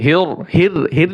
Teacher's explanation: বিসমিল্লাহির আবার র মোটা হবে